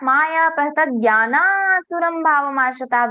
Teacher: But when in shloka we read that Maya pahitagyana asuram bhavamashitaha, visarga is not there, because visarga is disappeared. Visarga has got disappeared because of the sandhi. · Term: visarga disappears